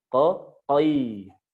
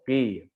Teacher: Si qaf ini nggak punya sifat idbak, nggak punya sifat yang lengket. Dia langsung terbuka. Qi. Udah, jangan qoi.